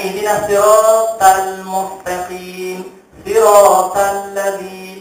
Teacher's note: kita dah turun sikit lidah kita. Maka jadi nipislah bunyinya.